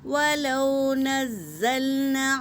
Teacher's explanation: وَلَوْ نَزَّلْنَا عَلَيْكَ كِتَابًا، واو ساکن سے پہلے زبر واولین، اسے جل پڑھیں گے اور زا کے اوپر تشدید ہے۔ تشدید میں ایک قسم کی سختی ہوتی ہے، تشدید والے حرف کو 2 بار پڑھا جاتا ہے